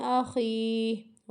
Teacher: ہا کی آواز آئے گی، ٹھیک ہے، لیکن اس کو کھینچنے کے بعد ہی آئے گی